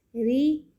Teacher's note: ری پڑھیں گے زیر کے ساتھ. ہم نے اس کو باریک پڑھنا ہے، ری، اس کو روئی موٹا نہیں کرنا، باریک پڑھنا ہے.